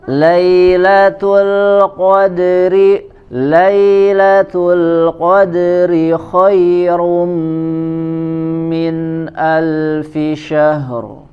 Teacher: huruf ha sempurnakan dulu sifat hamsnya ya, dan rokhawah syahr, baru ke huruf ro-nya dibaca dengan tebal